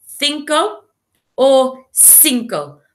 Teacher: in Spanish, we say the C with a th sound, cinco. But if you were in South America, you would say cinco.